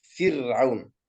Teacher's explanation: الراء ساكنة لكن سبقت بكسرة وهي الفاء، أيضا ترقق